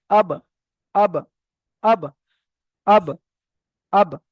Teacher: দুটো ঠট এক জায়গায় করব এবং সঙ্গে সঙ্গে আলাদা করে দিতে হবে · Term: কলকলা